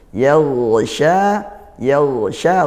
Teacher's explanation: Yaghsha, yaghsha ghain sukun. Nah, ghain sukun dia ditebalkan ya.